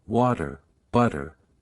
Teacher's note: the flap t in words like water, butter